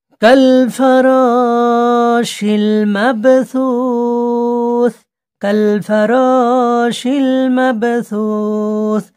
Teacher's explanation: মাব, পাটা কলকলা হবে। সুস, আয়াতের জায়গায় ছাড়লেই আপনাকে সাকিন করে ছাড়তে হবে।